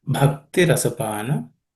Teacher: This bha has to be aspirated.